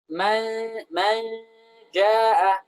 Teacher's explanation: Kemudian kita biarkan sebentar agar gunnahnya itu keluar dari hidung. Man jaa, keluar dari hidung.